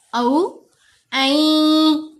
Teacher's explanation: یہ حمزہ کے اوپر زبر، ساتھ واو ساکن، واو لین ہے، اس لیے او آواز بنے گی